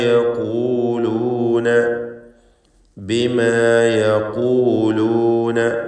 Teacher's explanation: ഖാഫ് നിസ്ബിയ തഫ്ഖീം കൊടുക്കണം. ദമ്മ ആയതുകൊണ്ട് മൂന്നാമത്തെ ലെവലിലുള്ള തഫ്ഖീം നൽകി ഖാഫിനെ സ്വരഭാരത്തോടെ ഉച്ചരിക്കുക